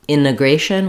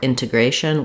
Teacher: I can either say integration without my T or integration with my T